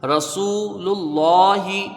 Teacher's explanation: را کو پر پڑھا جائے گا کیونکہ اس کے اوپر زبر ہے